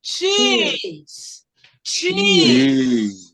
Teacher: A letra E tem som de I. Então, eu tenho dois Is, que é um I longo.